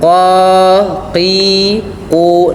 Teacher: Qaf merupakan huruf yang dikeluarkan daripada pangkal lidah kita melekat dengan langit-langit yang atas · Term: huruf qaf